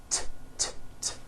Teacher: It's unvoiced. Your vocal cords are not vibrating.